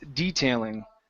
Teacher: we put the stress at the very beginning